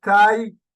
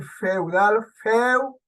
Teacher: en la palabra la sílaba Tai la vocal abierta a se pronuncia con más fuerza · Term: diptongo